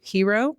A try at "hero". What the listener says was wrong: Because I say hero. I say hero. but you say hero. You accentuate the he. Hero.